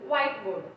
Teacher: But the stress in compound words is comprised of two nouns. Usually the stress is only on the first word.